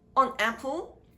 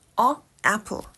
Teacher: add the consonant N so that the tongue touches the upper part of the oral system. The flow of air can be blocked for a while.